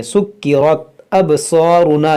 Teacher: یہاں پر را کو موٹا پڑھیں گے